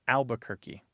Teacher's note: That first R just poofs goes away. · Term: dissimilation